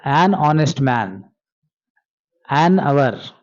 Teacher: an honest man ಅಂತ ಹೇಳಿದಾಗ h becomes silent. h next o ಇದೆ vowel letter.